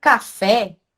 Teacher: Já no café, o fé ele se sobressai. Então, ele é a sílaba tônica mais forte.